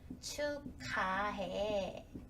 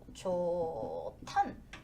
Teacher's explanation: 히읗이 보이면 바로 앞뒤에 있는 거 묶어주셔서 축하해 이렇게 되죠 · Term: 거센소리